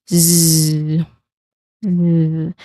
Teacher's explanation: Although the spelling is letter S, the way we say it should be buzzing. It should be voiced. · Your throat is clearly vibrating, which means that your letter Z sound here is a voiced sound, so a buzzing sound.